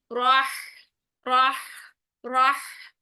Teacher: हा साकिन आ गया, सांस और आवाज दोनों जारी। ठीक है, रह, रह, राह, ये करना है ठंडी सांस के साथ।